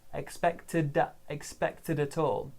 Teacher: So the D in expected joins the A in at all. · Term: linking